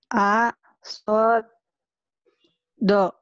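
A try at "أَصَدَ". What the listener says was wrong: A bukan sod ya, sudah berbaris.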